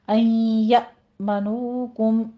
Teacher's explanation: یا میں تھوڑا سا جھٹکا دیں گے، حمزہ ساکن ہے۔